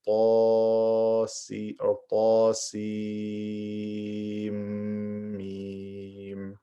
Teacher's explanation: I merge the noon into the meme. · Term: idgham